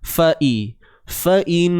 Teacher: Kalimah Allah kena tebal sebab apa? Sebelumnya terdapat huruf berbaris atas. Ingat, tebal pada lam sahaja, bukan pada nun.